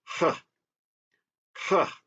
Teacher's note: it's a growl with a heavy H